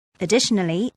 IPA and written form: əˈdɪʃ.ən.əl.i (Additionally)